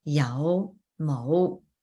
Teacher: the fifth tone, so it's that low rising